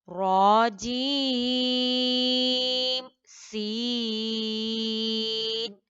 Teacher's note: रॉ को 2 beats पर long करना है, जीम को 6 बीट, सीन को भी 6 बीट, लेकिन जीम और सीन के दरमियान आपने इजहार करना है, बिल्कुल क्लियर पढ़ना है।